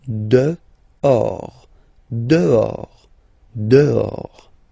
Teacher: Okay, so remember, final S not pronounced, and then this H. In French, doesn't exist phonetically, so you don't pronounce it.